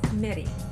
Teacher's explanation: it should be sounding higher and longer in the second syllables